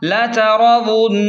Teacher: یہاں پر نون مشدد ہے تو غنہ لازمی ہوگا